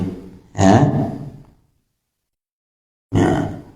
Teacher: Mad nah huruf ya ini Bentuknya sama dengan huruf syin artinya bagian tengah lidah itu mengangkat mendekati langitlangit